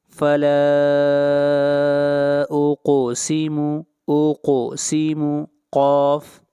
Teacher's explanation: فلا اقسم، اقسم قاف، قاف حروف مستعلیہ میں سے ہے، قاف کو موٹا پڑھیں گے اور قاف کے اوپر قلقلہ ہوگا۔ اقسم یعنی آواز کو ہلائیں گے، اقسم پڑھنا غلط ہوگا۔